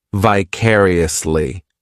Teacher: the fourth syllable has the schwa · This adverb has 5 syllables, and the stress is on that second syllable,